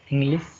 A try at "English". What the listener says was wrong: yes. You are not able to pronounce sh sound. You are trying to, you know that you want to pronounce sh is correct. See, sir, sh. Difference is there, right? So when you want to say sh, it sounds like sir.